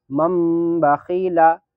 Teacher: نون کو میم سے بدل کر غنہ اور اخفا کے ساتھ پڑھیں گے۔ مثلا مم بخیلا کو اس طرح پڑھیں گے، مم یعنی میم کو یعنی میم نون کی جگہ میم میم پڑھیں گے۔